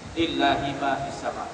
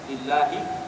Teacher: Allah itu dibaca dengan tipis, ya. Sebab dimula sebelum kalimah itu ada baris bawah.